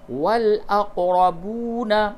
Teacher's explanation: پڑھ کر کے پڑھیں، تَرَكَ الْوَالِدَانِ وَالْأَقْرَبُونَ، با واو پیش بو، واو مدہ ہے، اس کو تھوڑا سا کھینچ کے پڑھیں گے